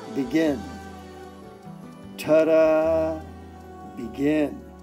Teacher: Hear how that second syllable is stressed?